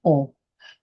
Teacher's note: egg could fit in there and you can still say oh your throat is open and air is coming through your throat not through your nose